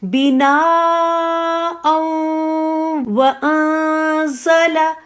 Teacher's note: اب نون پہ اخفا ہے جو انشاءاللہ آپ آگے پڑھیں گی، تو اخفا کرتے ہوئے زا کے مخرج پہ جائیں گی